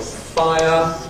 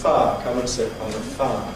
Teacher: Or the other example, fire, where we've got I plus Again, we lose the second element of the diphthong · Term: smoothing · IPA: [ faə ]